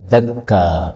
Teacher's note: Yang pertama pada ayat 98 dakka'a. Ini boleh dibaca dakka. Jadi hamzahnya dihapuskan.